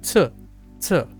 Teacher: there's a burst of air that creates that t t sound